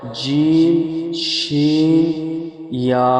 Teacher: জিবের মাঝখান এবং তার বরাবর উপরের তালুর সাথে মিলিয়ে তালুর সাথে লাগিয়ে উচ্চারিত হয়